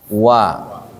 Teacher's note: Ada bibirnya tidak rapat wa dimonyongkan